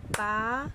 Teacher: ¿Cuál sería la sílaba tónica de la palabra página? Muy bien, pa. Entonces, página es una palabra esdrújula.